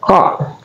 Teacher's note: Za adalah tarful lisan atau keluar di ujung lidah, za ya, za. Kemudian ka adalah akasal lisan keluar di pangkal lidah, ka. Dia sukun, berarti dia hukum tajwid adalah qalqalah, dipantulkan.